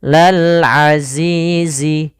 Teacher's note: kasrah bertemu Ya Sukun Lal Azizi ada alif lam di sini Alif lamnya kita namakan dengan alif lam qamariah karena lamnya dibaca dengan jelas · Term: alif lam qamariyah